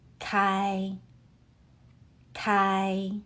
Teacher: Kai uses the first tone. Keep your voice high and level.